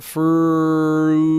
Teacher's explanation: I'm using the back of my tongue and soft palate to help shape that vowel.